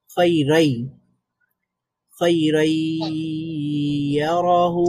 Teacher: খৈরন আছে, ইয়ারাহু আছে, তাহলে আমরা খৈরন এর শেষে যে ন সাউন্ডটা আছে ওই ন সাউন্ডটা বাদ দিয়ে ইয়া সাউন্ডে কনভার্ট করব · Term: ইদগাম